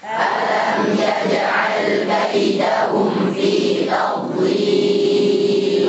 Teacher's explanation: Dhad punya sifat rakhawah, ngalir suaranya. Berbarengan dengan itu ada sifat istitalah, terdorong sedikit ke depan lidahnya setelah menabrak makhrajnya.